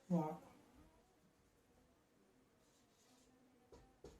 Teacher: పై దంతాలు కింద పెదవులను లైట్గా స్పృశిస్తూ ఈ యొక్క వా అనబడే అక్షరాన్ని మనం పలుకుతాం కాబట్టి దాన్ని దంతోష్యం అంటారు.